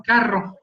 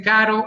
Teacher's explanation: Pero, si se dan cuenta, igualmente, son idénticas las 2 palabras, solo se diferencian en un sonido, entre que uno es vibrante múltiple y el otro es vibrante simple